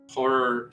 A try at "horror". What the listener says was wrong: like hoary when you said it. your accent for sure. Like a lot of people when they say horror, it sounds like that though. Horror. Horror. It's a weird word.